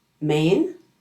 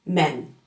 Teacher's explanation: The long A in main has movement. It's not flat. And it's composed of two sounds. An eh and an ee. The short E in men is short and flat, and it only has one single eh sound.